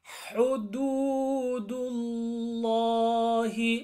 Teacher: ح with the ضمة push more otherwise it becomes هدو which is wrong